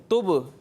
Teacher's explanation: با کی آواز لوٹتی ہوئی محسوس ہو رہی ہے یہ ہے قلقلہ، یہاں قلقلہ خوب ظاہر کرنا ہے، ٹھیک ہے۔